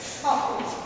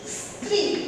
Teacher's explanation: যুক্ত ব্যঞ্জন ছাড়া দন্ত স তালব্য স এর মতোই কিন্তু উচ্চারণ। আবারও বলি দন্ত স যুক্ত ব্যঞ্জন, যখন যুক্ত ব্যঞ্জনে উচ্চারিত হবে সেখানে দন্ত স্বর উচ্চারণটা দন্ত স্বর মতো থাকে, বাকি সমস্ত ক্ষেত্রে কিন্তু তার উচ্চারণটা তালব্য স এর মতোই হয়।